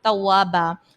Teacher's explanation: اور توابا میں الف سے پہلے پھر زبر ہے، الف مدہ. اور دو زبر کی تنوین کو ہم ایک الف سے بدل دیں گے